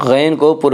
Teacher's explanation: فأغنی غین کو پر پڑھیں گے، غین حروف مستعلیہ میں سے ہے۔ حروف مستعلیہ 7 ہیں جن کا مجموعہ خص ضغط قز ہے، جو ہمیشہ ہر حال میں پر پڑے جاتے ہیں۔